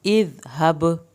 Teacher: با پہ قلقلہ ہوگا، ذال کو نرم پڑا جائے گا